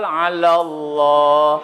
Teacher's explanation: Karena sebelum lafaz Allah berbaris fathah, maka dibaca tebal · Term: Tafkhim